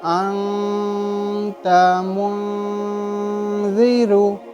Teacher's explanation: یہ واضح طریقے سے نون کی آواز ظاہر نہ ہونا ہی اکفا ہے. ادا ہوگا نون ساکن تنوین، مگر پوری طریقے سے ظاہر نہیں ہونا ہے. ناک میں چھپانا ہے، اس کی آواز کو ناک میں چھپانا ہے.